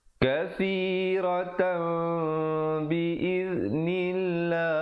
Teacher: tukarkan bunyi tanwin atau nun matinya kepada mim yang nipis kadar panjang 2 harakat · Dan juga perkataan lafzul jalalah datang sebelumnya baris kasrah, kena baca nipis. Berbeza dengan atas tadi, mulaqullah dibaca tebal, biiznillah dibaca nipis. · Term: iqlab